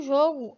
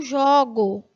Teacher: você vê que a pronúncia né do primeiro ó do substantivo jogo é fechada · o substantivo primeiro o fechado no verbo primeiro é aberto